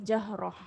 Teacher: Matikan ta tu macam huruf ha.